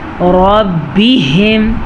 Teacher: ہا کے مخرج کا دھیان رکھنا ہے کیونکہ یہ ہا سینے سے نکلتا ہے اور یہ حلق کے آخری حصہ کہلاتا ہے